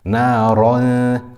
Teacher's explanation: instead we make the ra full mouth and we make the ghunna light.